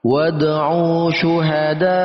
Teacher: Dal berharokat fathah bertemu dengan alif, ini masuk dalam kategori mad tabi'i. Lalu bertemu dengan hamzah dalam satu kata, maka masuk dalam kategori mad wajib muttasil, dibaca 4 sampai 5 harakat